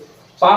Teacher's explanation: पा बोल रहे हैं तब ओठ आपस में मिल रहे हैं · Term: ओष्ठ व्यंजन